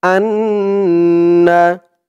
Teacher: ওয়াজিব গুন্না হবে কারণ হরকতের পরে নুনের উপরে তাসদিদ আসছে